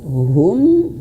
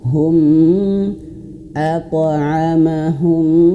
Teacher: Idgham artinya masuk ke huruf mim. Masuk hum, masuk.